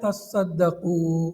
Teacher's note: تا کو صاد سے بدل کر صاد کو صاد میں مدغم کر دیا